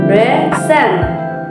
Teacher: In the word present or as a verb meaning to show or give, the stress is on the second syllables present. There's variation in stress can even change the meaning of a word, as shown in the example above.